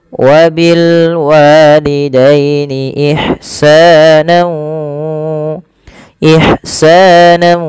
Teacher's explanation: masukkan tanwinnya kepada huruf wau na kemudian ditahan dengan dua harakat Ya ditahan dua harakat bunyinya wabil Walidain Ihsan Ihsan ah seperti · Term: Idgham bunah